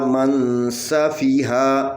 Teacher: نون ساکن کے بعد سین ہے، اور سین حروف باریک ہے، اور یہاں پہ اخفا باریک ہوگا